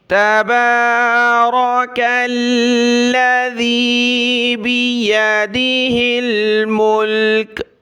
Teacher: باریک تا ہے، چھوٹی تا، تا زبر تا، با کے اوپر کھڑا زبر ہے، ایک الف کی مقدار با کو اوپر کھینچنا ہے کھڑا زبر کی وجہ سے، اور یہ را کلرفل ہے، اس کو ہم نے موٹا پڑھنا ہے کیونکہ را کے اوپر زبر ہے۔